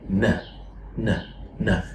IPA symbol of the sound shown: n